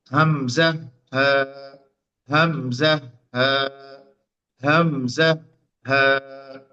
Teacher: এই অক্ষরটা উচ্চারণ করবেন কন্ঠের শুরু থেকে